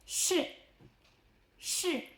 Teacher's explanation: Same retrlex position, but now let the air flow continuously. Think of the sh in she but with your tongue curled back.